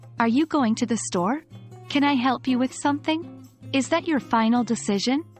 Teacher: your voice should rise at the end of these questions. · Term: rising intonation